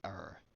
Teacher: R is not trilled and renders more like a voiced alveolar approximant